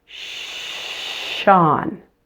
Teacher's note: Let's start with Sean with the sh, voiceless.